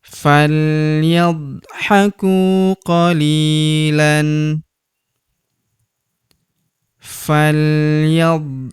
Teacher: Huruf ku kita panjangkan dua harakat karena terdapat wau sukun di depannya.